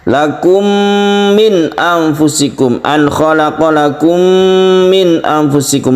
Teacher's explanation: mim mati bertemu dengan mim, kita sebut dengan idgham mimi, ini juga kita dengungkan, kita panjangkan